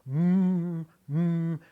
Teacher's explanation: When you make an M sound, you don't put your tongue against the back of your teeth. You put your lips together.